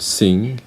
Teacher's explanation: The last sound of the word sing is a velar sound